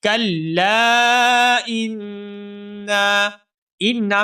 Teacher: حمزہ کو نون مشدد کے ساتھ ملائیں گے اور نون مشدد کے اوپر غنہ ہوگا